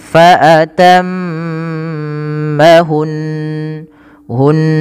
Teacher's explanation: mimnya dia baca dengan gunnah sambil ditahan dua harokat dulu. Dan nunnya juga sama, tapi bukan dibaca hun, ya, tidak dibaca hun.